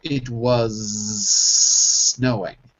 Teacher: was snowing so the S sort of transform forms into sorry the S becomes a z it was and it transforms back into an S for snowing and they link together